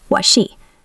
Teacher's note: What has a stopped T because the next word is she, what she. Wanted.